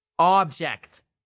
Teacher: Object, vous avez un stress, un accent tonique sur la première syllabe.